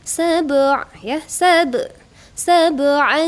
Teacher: karena berada di tengah-tengah kalimat, pantulnya sedikit saja gitu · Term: qalqalah sugro